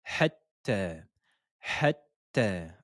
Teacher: il faut bien dédoubler la lettre T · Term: shedda